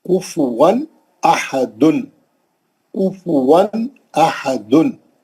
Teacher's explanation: कुफ़ वन अहदुन कुफ़ वन अहदुन वन पे जो तनवीन थी वाऊ पे जो तनवीन थी उसको जल्दी अदा करें क्योंकि फॉललोड बाय हमजा पहला अलिफ तो असली है दूसरा अलिफ हमजा है उफवन अहदुन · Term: इज़हार